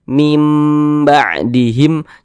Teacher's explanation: huruf ba hukumnya iqlab maka cara membacanya itu dengan cara Merubah merubah bunyi nun sukun ini menjadi huruf mim